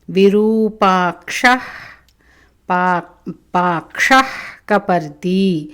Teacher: జిహ్వామూలీయ విసర్గ గొంతులోంచి వస్తుంది